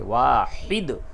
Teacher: واحد ہا کو حلق سے نکالیں گے